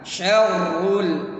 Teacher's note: Syarrul ra-nya tebal. Kemudian itu ditekan.